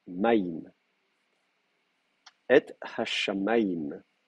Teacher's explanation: Donc ça, c'est une caractéristique du duel, en fait, hein, puisque au départ, en fait, ce que vous avez, c'est une diphtongue, aïm. Au lieu d'avoir une finale im, vous avez une finale aïm, une diphtongue. Et donc, qui n'est pas contractée.